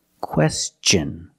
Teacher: when tion is after an s then it's pronounced differently it's pronounced with the CH sound the hard CH sound like chicken and change